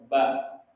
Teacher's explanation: Kalau huruf ba itu sifatnya jaher. Jaher itu artinya udara tertahan.